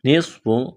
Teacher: نصف نون کو سواد کے ساتھ ملانا ہے. سواد میں سیٹی کی آواز پیدا کریں گے. سواد کو موٹا کرنا ہے.